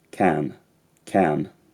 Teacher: as with a lot of very high status RP accents the vowel in the word can is slightly broken